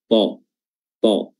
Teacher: Jadi yang membuat dia tebal bukan bibir yang bulat, ta, bukan, tapi pangkal lidah yang terangkat ke atas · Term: isti'la